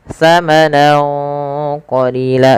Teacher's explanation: samarkan suara nunnya kepada huruf qaf awalnya samanan, karena bertemu qaf samanan qalila, dan ditahan dengungannya sepanjang 2 harokat. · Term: ikhfa